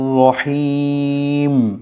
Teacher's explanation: শেষে রহিম এখানে একটু দীর্ঘ টান হবে তিন আলিফ টান হবে